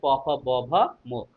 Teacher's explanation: দুই ঠোঁটকে একবার হলেও লাগিয়ে উচ্চারণ করতে হচ্ছে প ফ ব ভ ম